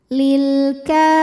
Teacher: alif lam yang menghadapi huruf qamariah yaitu huruf Kaf dibaca lamnya jelas · karena ada huruf Kaf yang barisnya fathah panjang cara membacanya dipanjangkan kafnya dua harakat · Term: alif lam qamariah, ma thobii muqaddar